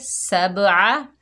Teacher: आइन को हलक से अदा करेंगे